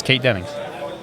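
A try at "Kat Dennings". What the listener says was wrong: Cat. Yeah, it's Cat Dennings. There's no E. It's just K-A-T. They just spelled cat wrong.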